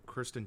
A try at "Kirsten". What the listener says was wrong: Kirsten. Kirsten. You said Kristen.